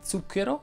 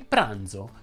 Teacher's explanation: la z sonora invece viene prodotta aggiungendo la vibrazione delle corde vocali · si distinguono due pronunce sorda e sonora c'è la z sorda di zucchero e la z sonora di pranzo